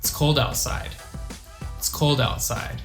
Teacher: sometimes we can even drop the i sound